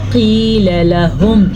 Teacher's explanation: ہا کے تلفظ کا خاص خیال رکھنا آپ نے، کیونکہ جو ہا ہے یہ سینے سے نکلتی ہے